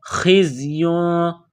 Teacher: خا گلے سے بلغم نکالنے کی طرح اس کو پڑھیں گے